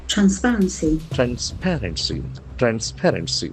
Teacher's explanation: accent falls on the second syllable